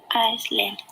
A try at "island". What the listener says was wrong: Island. No S at the beginning.